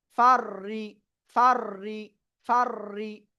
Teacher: রর উপরে তাসদিদ, আরেকবার র নিজের সাথে পড়তে হবে।